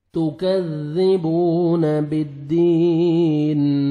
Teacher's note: واو مدہ, 1 second با کو کھینچیں گے